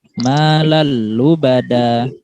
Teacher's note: Maka tanwinnya itu nggak boleh dibaca dengung. Harus dibaca tanpa dengung. Atau dalam arti lain dijadikan satu.